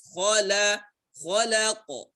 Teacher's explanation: Khala, kha tebal, lam tipis, qaf tebal.